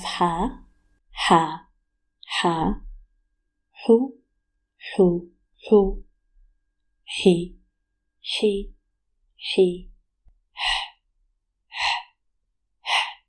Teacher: While ha originates from the mouth, ha originates from the back of your throat